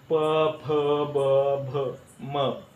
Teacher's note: ओठ ओठांवर चिटकवत असतो यामध्ये ओठांचा स्पर्श एकमेकांना होत असतो